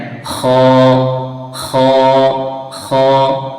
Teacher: ये भी हलक से निकलता है। लेकिन ये जो हलक का ऊपर वाला हिस्सा है मुंह की तरफ वाला हिस्सा वहां से ख निकलता है। तो ये इसका मुख मखरज हो गया।